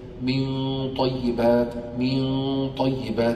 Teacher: فبعيد مخرج الطاء عن مخرج النون, فمرتبة الإخفاء شو بتصير؟ مرتبة الإخفاء بتصير أعلى, الغنة أظهر. · مخرج الطاء بعيد من مخرج النون, طاء طاء داخل نون, في النون يرتفع مقدم اللسان إلى الحنك الأعلى, مقدم الثنايا